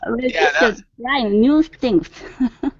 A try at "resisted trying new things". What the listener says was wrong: There, good, much better with your vowel sounds here, okay?